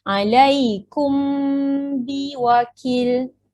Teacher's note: dibaca dengan bibir tidak dirapatkan tetapi direnggangkan sedikit semasa melafazkan mim sakinah · awak kena dengungkan dekat mim dengan bertemu ba ni. Kena sembunyikan sikit. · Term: ihfa' syafawi